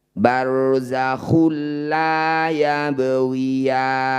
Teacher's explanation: getarannya barzakabani dumah tanwin bertemu lam disebut bacaan Idgham bila ghunah bunyi dumah tanwinnya masukkan pada lam tidak perlu didengungkan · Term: idgham bila gunnah